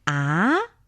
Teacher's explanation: to enunciate the four tones Ah that's the first tone Ah that's the second tone with a little bit question mark in the pronunciation